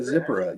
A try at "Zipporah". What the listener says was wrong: Yeah, it's actually pronounced Zipporah. The emphasis is on the second syllable.